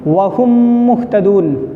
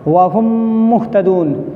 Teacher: پہلی میم نہیں پڑھی جائے گی بلکہ میم کا میم میں ادغام ہو جائے گا، دوسری والی میم پہ تشدید رہے گا، اس میم کو پڑھیں گے۔ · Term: ادغام شفوی